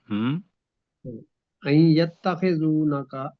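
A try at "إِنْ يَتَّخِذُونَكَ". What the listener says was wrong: نہیں، الف کے نیچے زیر پڑھیے سر. این یتخذونک.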